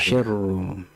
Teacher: Jadi tebalkan ra dhammah